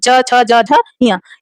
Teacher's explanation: हमारी जो जिह्वा होगी वो तालु से बार बार जाके टकराएगी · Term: चा वर्ग